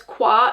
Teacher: so the a has that schwa sound